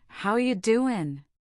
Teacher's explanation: The words flow together. Are becomes ya, and doing becomes doin'. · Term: connected speech